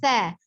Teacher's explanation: Ujung lidah ada di ujung gigi seri atas